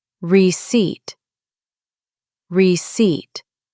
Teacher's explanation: The P is silent. Just flow through the word.